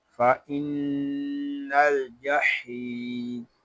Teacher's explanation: یہاں حا کو ایک الف تک کھینچ کر پڑھیں گے، کیونکہ یہاں یا مدہ ہو رہا ہے.